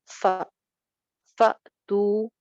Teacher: हमेशा झटके के साथ पढ़ा जाता है तो फ तो यानी आवाज और सांस दोनों रुक जाते हैं इस वजह से एक जर्क सा फील होता है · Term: साइलेंट हमजा